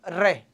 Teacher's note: जब आप रे बोलते हो तो जीभ 2-3 बार कंपन करती है। आप बोलो एक बार, बोलो रे, बोलो रे रे, आप खुद तो लगेगा यार हाँ जीभ कंपन तो कर रही है। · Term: परकंपित